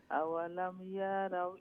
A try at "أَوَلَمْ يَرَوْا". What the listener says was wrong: ইয়া লঙ্গিবনি আওয়ালাম ইয়ারাও ইয়া লঙ্গিত না ইয়ার উপরে জবর একটা কথা সব সময় আমরা রাখতাম যে জের জবর পেশ হরকতের উচ্চারণ জলদি জলদি আওয়ালাম ইয়ারাও কইলে ইয়া লঙ্গই যাব আওয়ালাম ইয়ারাও